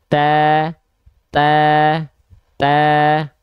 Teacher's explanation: dia dilafalkan sambil senyum terdengar lebih tipis terdengar lebih tipis Kenapa karena dengan kita tersenyum sifat tipis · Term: huruf yang tipis